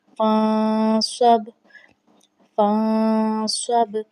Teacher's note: تو نون ساکن آیا ہے لیکن آواز نون گنہ کی ہے